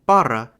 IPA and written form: ˈparɐ (па̀ра)